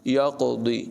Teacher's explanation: قاف کی آواز پر ہوگی، قلقلہ بھی کریں گے اور ضاد کی آواز بھی پر ہوگی